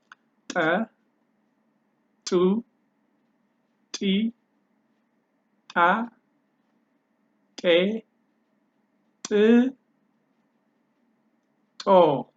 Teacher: The first one ta ta ta is just between your tongue and your upper palate, front upper palate